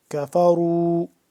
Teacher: کفروا، یہ کاف باریک ہوتا ہے، کش والا کاف باریک کر کے پڑھتے ہیں